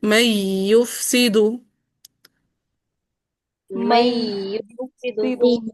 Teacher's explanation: تھوڑا سا آواز میں بلندی بھی لے کر آئیں گے، ہلکا سا نبر بھی ہوتا ہے واو مشددہ اور یا مشددہ میں